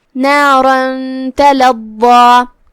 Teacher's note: کلمت تلظى میں یہاں ضاد ہے اور اس پہ تشدید ہے، لہذا 2 حرف کی مقدار میں ضا کو پڑھنا ہے. ضا کی ادائیگی زبان کے سر اور اوپر والے دانتوں کے اندرونی کناروں سے ہے لیکن ضاد حروف تفخیم میں سے ہے تو ہم اسے بھاری آواز میں پڑھیں گے.